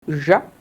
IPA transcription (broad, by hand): ʒ